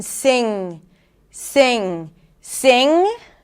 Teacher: So, NG, the air comes out through the nose. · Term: NG consonant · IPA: /ŋ/